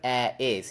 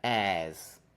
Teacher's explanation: We're just removing the second vowel. We're removing the vowel from is. So instead of air is, it's just air, like that. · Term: contraction